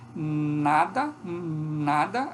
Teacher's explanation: a língua bloqueia a passagem do ar nos alvéolos